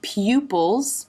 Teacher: lips start bigger and then come into the tighter Circle